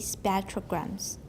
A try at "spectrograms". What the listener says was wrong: You're still saying spectrograms. It's spet, short, and you hardly open your mouth. Spectrograms. Spec.